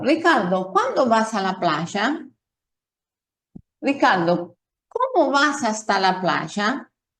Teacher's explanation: Y también están preguntas que comienzan generalmente por pronombres interrogativos como cómo, por qué, dónde, cuándo, que en estas preguntas notamos que el tono de voz sube y después desciende al final